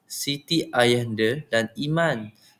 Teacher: terdapat keseimbangan antara vokal hadapan I dan vokal belakang A seperti dalam kata Siti ayahanda dan Iman. Gabungan ini memberikan keseimbangan bunyi tinggi dan rendah yang melambangkan keseimbangan rohani dan jasmani.